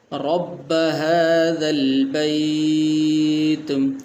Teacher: را کے اوپر زبر ہے تو اس کو بھی موٹا کریں گے۔